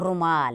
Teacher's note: बड़े ऊ में खिंचाव के साथ आप साउंड करेंगे